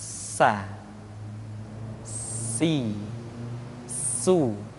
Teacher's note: Di antara sifat yang menonjol ketika kita mengucapkan huruf sa atau huruf sin adalah sifat as-safir, di mana ketika kita mengucapkan huruf sa ada suara tambahan yang menyerupai dengan suara belalang